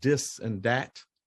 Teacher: the th sound in many African languages has a DA sound